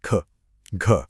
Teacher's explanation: इन ध्वनियों को बोलने में सांस का एक जोरदार झोंका निकलता है। जैसे आप चश्मे पर भाप जमा रहे हो। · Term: महाप्राण